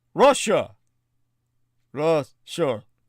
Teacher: When Americans say Russia, the first and second syllable rhyme. And this is actually baffling, since the first vowel is a U and the second is an A. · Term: schwa